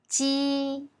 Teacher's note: The surface of the tongue touches the hard palate when pronouncing J, but it doesn't bring out a strong airflow.